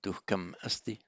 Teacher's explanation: So duhkam asti will be written syllable by syllable as duh ka ma sti. Duhkam asti, run together as if it's all one word.